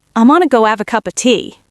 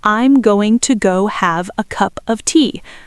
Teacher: Step two, we drop the H in have. In workingclass British English, dropping the H at the beginning of words is incredibly common. So have becomes a.